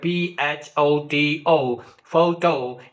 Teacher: For example, when you take this word photo, photo, it has two syllables, but the first syllable pho is stressed while speaking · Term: word accent